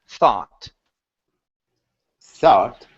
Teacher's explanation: So the O-U-G-H in this particular word is an ah sound. And this is American English, not British English. So instead of saying thought, it's ah, thought.